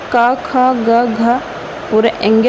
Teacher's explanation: क ख ग घ का उच्चारण स्थान कंठे हो जाएगा